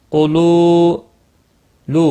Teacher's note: واو مدہ ہے، ایک الف کے برابر کھینچ کر پڑھنے ہیں۔ قاف مستعلیہ ہے، موٹا پڑھنا ہے۔